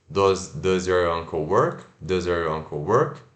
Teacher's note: frases que a resposta é sim ou não, final da frase, entonação sobe